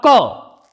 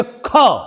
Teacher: जैसे हमने बोला क, तो बहुत आसानी से बहुत कम मात्रा में वायु बाहर निकल रही है, लेकिन हम बोलेंगे ख, तो इसके उच्चारण में क की अपेक्षा अधिक वायु बाहर निकल रही है, इसीलिए ये हमारे कहलाएंगे महाप्राण।